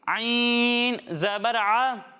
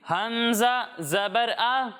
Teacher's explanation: جب ہم عین کی ادائیگی کریں گے تو اسے حلق کے درمیانے حصے سے پڑھیں گے، اور جب ہم حمزہ کی ادائیگی کریں گے تو اسے حلق کے نچلے حصے سے پڑھیں گے، یعنی اسے پڑھیں گے عین زبر ع، اور اسے پڑھیں گے حمزہ زبر آ۔